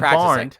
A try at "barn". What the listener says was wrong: Did you say barned? You said you put a D at the end. You totally did. Listen back to this episode. you'll hear the D at the end.